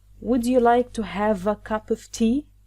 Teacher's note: Of course “e” is silent, so we link “v” to “a” and here we have “p” we link it to “o.”